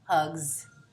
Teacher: But if the word was hug and I put an S on the end of hug, it becomes hugs, and that's a z sound, a voiced S sound, because the g at the end of hug is voiced